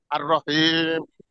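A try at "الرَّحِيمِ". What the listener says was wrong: হয় নাই, আর রহিম চার আলিফ টানবেন, আর রহিমি। যখন মিমের পরে জেড দিয়ে পড়বেন তখন হবে এক আলিফ, আর যখন মিমের পরে সুকুন দিয়ে পড়বেন তখন হবে চার আলিফ, অর্থাৎ আর রহিমি, রহিম। আর হাঁটা উচ্চারিত হবে গলার মাঝখান থেকে, এটা একটু খেয়াল করে আপনি পড়েন।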